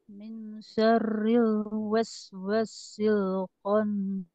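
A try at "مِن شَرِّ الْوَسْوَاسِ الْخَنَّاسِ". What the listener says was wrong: Wanya panjangkan Bu ya.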